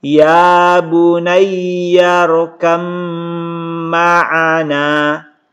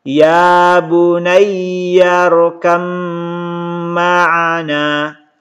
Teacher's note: Ini didengungkan teman-teman sekalian karena mim itu gunnah. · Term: idgham mutajanisain